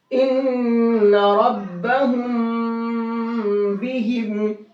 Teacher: اس میم کے اندر غنہ اور اخفا دونوں کریں گے